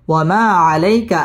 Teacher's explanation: জবরের বাম পাশে জজম ওয়ালা ইয়া লিনের হরফ তাড়াতাড়ি পড়তে হবে